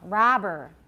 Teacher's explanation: Make sure the ah is long.